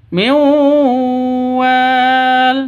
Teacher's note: Cara bacanya masuk ke wawu disertai dengung karena idgham bighunah. Min wal seperti itu dengung.